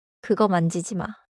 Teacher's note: The final ma is short and falling, but it does not need to be harsh.